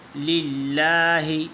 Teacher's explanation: لفظ اللہ سے پہلے زیر ہے، تو پھر لفظ اللہ کے لام کو باریک پڑھیں گے